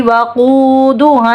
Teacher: فا میں آواز رکے گی، لو پہ واو مد دور ہے، ایک الف کے برابر کھینچیں گے، واو ہونٹوں کو گول کرنے سے ادا ہوتا ہے